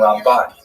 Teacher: Rambam is pronounced with the emphasis on the first syllable. Rambam and Ramban is pronounced with the emphasis on the second syllable